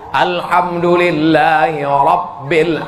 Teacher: Ra-nya tafkhim tebal, bukan ro, bukan ora.